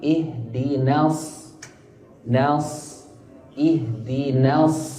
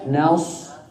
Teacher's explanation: النون مرققة والصاد مفخمة